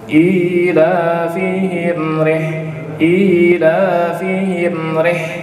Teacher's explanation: Ra-nya ini adalah ra tarik tipis. Jadi ri jangan ditekan. Ketika ditekan maka dia masuk ke huruf ra tafkhim atau tebal. · Fihim, mim sukun ketemu ra, izhar syafawi. Nah, ketika pengucapan izhar syafawi jangan ditahan tapi mengalir.